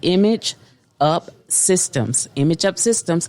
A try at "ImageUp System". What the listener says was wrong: System. No S. ImageUp System. No S on the end.